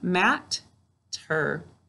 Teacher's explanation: we need to hear that t sound in both syllables. That's how it's a 2-way word.